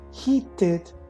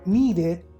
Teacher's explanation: then the id is pronounced as a separate syllable · In those cases, like in the word heated and in the word needed, then the ED is pronounced as a separate syllable, as ed or id.